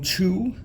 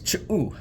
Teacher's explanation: So the letter I'm talking about is called Ch'u, and that sound that you heard, that little pause after the CH instead of fully saying Chu, is Ch'u, and that's that cooked in glottalization.